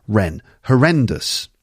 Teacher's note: Horrendous. 3 syllables, and it's the second syllable.